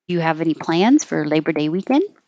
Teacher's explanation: it's a yes no question so it'll go up